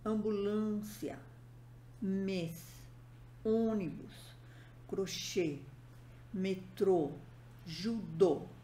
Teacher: a vogal deve ser pronunciada de forma fechada